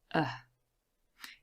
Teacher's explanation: Now the schwa is really easy to produce. You just relax everything, you produce a short sound, and it is the central vowel sound, so it goes right in the middle of our chart. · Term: schwa sound